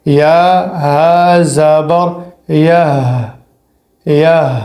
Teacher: ہا کا آواز حلق سے آنا چاہیے لیکن بالکل نرمی کے ساتھ، دباؤ نہیں ہو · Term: چشمے والی ہا